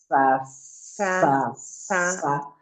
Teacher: আপনার নিচের পাটির দাঁতের খুব ক্লোজে যাচ্ছে, ওখানে গিয়ে সাউন্ডটা বের করে দিচ্ছে। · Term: সিন